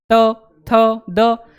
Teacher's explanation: जो ऊपर वाले दांत हैं दांतों के पास पहुंच जाती है हमारी जीभ